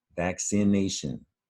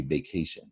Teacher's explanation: There's an N sound right in the middle of vaccination, and if you read vacation, you drop that N sound right out of the word.